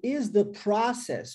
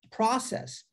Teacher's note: você tem o O, que é no alfabeto pronunciado como OU, e agora pronunciado como A, olha, aberto